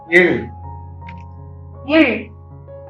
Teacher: The tongue is bent fully inward. The tip of the tongue touches the hard palate, that is the innermost palate, and this produces the sound Il.